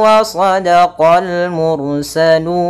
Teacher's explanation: pada lafal mursalun ra-nya tebal karena didahului dengan ra sukun didahului dengan dhammah